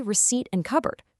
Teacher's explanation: Take this silent P and B for instance. The spelling promises a tiny explosion, but the actual spoken word drops it completely. · we just say receipt and cupboard. There's no pop of air at all.